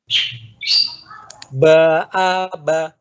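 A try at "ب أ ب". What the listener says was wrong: Coba pengucapan A-nya kurang buka. Ba, a, hanya kurang buka. Ulangi lagi.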